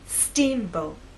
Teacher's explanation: Now, when you say the word, I want you to think about making the first part at a higher pitch. So our voice will be higher at the beginning and lower in the second part. Steamboat. Now let's put it all together, making the first part of the word louder, longer, and at a higher pitch.